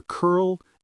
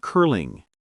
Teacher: In curl, the L is a dark L because it ends the syllable. In curling, the L is light because it begins the next syllable.